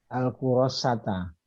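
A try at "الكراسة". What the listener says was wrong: Nah ini pakai tasdid Mbak ya. Al-kurrosata.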